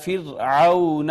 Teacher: اس کے بعد واو کا ما قبل مفتوح تھا، واو لین ہو گئی